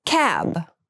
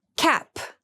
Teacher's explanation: cab has the voiced B sound and cap has the unvoiced P sound